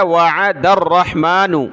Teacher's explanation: دال کو آگے را کے ساتھ ملایا